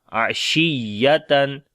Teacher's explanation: On the ya we make nabar, like when ya and waw comes with shadda sign, we make nabar there. We raise our voice, or we loud our voice.